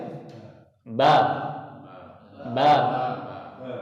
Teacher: kalau untuk huruf ba, maka dia berasal dari dua bibir ini. Jadi ditutup dulu, tapi tutupnya nggak usah ini ya.